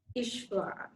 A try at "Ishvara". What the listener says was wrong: Right, nice. Nicely done.